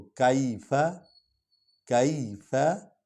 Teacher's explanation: فا جو ہے یہ حرف شفوی ہے، ہونٹوں سے ادا ہوتا ہے، اس لیے ہم اس کو پڑھ رہے ہیں کیفا۔